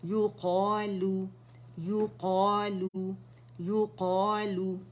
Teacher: اب یا باریک ہے, اس پہ دمہ کریں گے, پہلے مخرج پہ یا پہ جائیں گے, گولائی دیں گے, قا موٹا ہے اینڈ لو باریک ہے